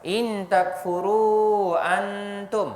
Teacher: nun mati nun sakinah bertemu dengan ta ikhfa hakiki, kita baca dengung sebanyak dua harakat. In takfuru antum, ini adalah waw jumpa hamzah, bukan alif jumpa hamzah.